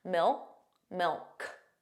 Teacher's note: So you put your tongue in the position of a K, milk, but you just don't push out that sound